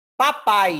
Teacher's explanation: o papai saiu totalmente pela boca não eu não tive nenhuma passagem de ar aqui então uma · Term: oralizada